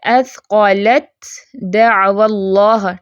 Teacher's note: تا ساکن ہے دال متحرک، لیکن دال کی آواز جو ہے وہ غالب رہے گی۔ اس میں تا آپ کو پڑھنے کے طریقے میں ذرا دیکھیں، تا آپ کو کہیں نظر آ رہا ہے نہیں، اس لیے کیونکہ تا پڑھا ہی نہیں جا رہا۔